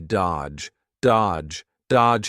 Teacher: the D is silent, the middle D